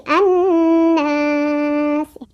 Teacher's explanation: Makanya itu dihukumi mad arid li sukun ketika berhenti itu, ya. Cara bacanya adalah dipanjangkan. Boleh 2, boleh 4, boleh 6 harokat, ya.